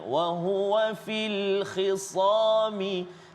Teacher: oleh kerana dia dalam keadaan berbaris kasrah, dia tak samalah tahap ketebalan dia seperti dia baris atas